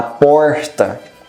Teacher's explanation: ele utiliza um R, que é o R reflexivo, como por exemplo, da porta.